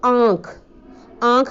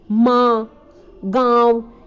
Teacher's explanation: अनुनासिक में नाक और मुंह दोनों से हवा बाहर आती है · मुंह से थोड़ी सी अधिक आती है, नाक से थोड़ी सी कम आती है, लेकिन आती दोनों जगह से है